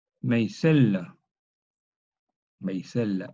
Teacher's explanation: Esta yod cierra la A en E, E y C. Luego esta yod también palataliza la S en una J antigua.